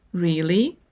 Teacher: Think about the way you say, really, when you are surprised. Your voice naturally goes up at the end.